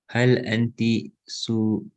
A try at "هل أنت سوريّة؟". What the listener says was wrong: Suriya is a shadda there, huh? So here they're trying to teach you that you've got to start differentiating between masculine and feminine.